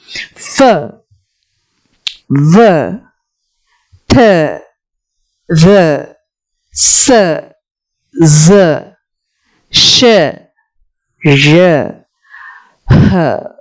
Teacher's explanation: there is a tiny or very narrow gap in between the articulators, and through this air passes out freely with audible friction